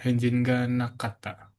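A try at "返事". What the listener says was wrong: Henji ya, bukan Henjin. Henji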